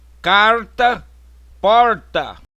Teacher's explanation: área caipira no interior de Goiás Minas Gerais Mato Grosso e São Paulo pronúncia do R retroflexo